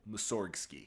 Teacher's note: pronouncing the name with the G in place and with the emphasis on the second syllable